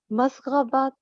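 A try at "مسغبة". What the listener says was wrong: پھر آپ نے تا پڑھا۔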